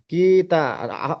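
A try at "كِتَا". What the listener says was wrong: তা টানটা দেন যে। কি টান দিচ্ছেন কেন? কি টানা হবে না? তাটা কিতা, তাটা তাটা টানা হবে তো ভাই। টানা হবে, কেন তা কেন টানা হবে ভাই? আলিফের ডান দিকে জবর আছে, আলিফ মাদ্দা বলে, বলেন।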